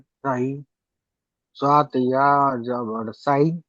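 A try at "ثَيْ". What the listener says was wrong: সাই নাই, সই। সত্র হলো পুরো অক্ষর, ঠোঁট গোল করে বললো সই। সিন যদি হতো তাহলে বাড়ি বাড়ি সাই সাই। সই, ঠোঁট গোল হচ্ছে দেখেন, সই।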